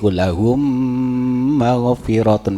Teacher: Kalau idgham misli lahum maghfiratun, memnya ditahan.